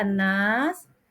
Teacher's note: dibaca panjang dan mendengung atau gunah